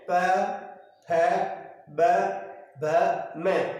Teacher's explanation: औष्ठ्य तात्पर्य होंठ से है, अर्थात हमारे जो होंठ होते हैं औष्ठ, यानी कहीं ना कहीं इनका उच्चारण करने पर होठों का एक रोल होता है, ठीक है, और होठों के द्वारा ही इनका उच्चारण जो किया जाता है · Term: औष्ठ्य व्यंजन